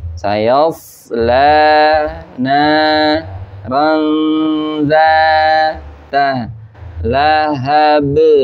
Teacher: Pertama huruf sa-nya harus pendek, shot-nya harus tebal.